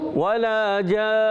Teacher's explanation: غنہ بھی ہوگا اور نون کو تھوڑی دیر کے لیے پکڑ کے رکھیں گے, صحیح ہے, اور ساکن ادا کریں گے, نون کو ہلائیں گے بھی نہیں, ٹھیک ہے, اور کوئی حرکت بھی نہیں پڑیں گے.